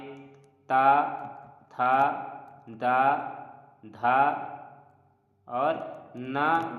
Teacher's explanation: तो दंत में त वर्ग आता है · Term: दंत व्यंजन